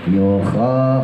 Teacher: khonya ngorokin asal aja, asal ada ya, jangan yuho ya, yuho jadi ha itu